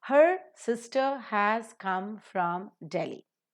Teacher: So here we reduce all the structural words into their weak forms and give the stress to sister, come and Delhi.